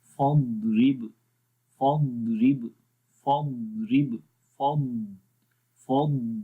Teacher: جب جزم ضاد کے اوپر ہم لگا کر اس کو پڑھیں گے تو اس کے اندر استطالت کی جو صفت ہے وہ زیادہ واضح ہوتی ہے